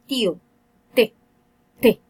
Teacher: la T, en este caso, es con el dorso de la lengua pegado hacia la zona de los alvéolos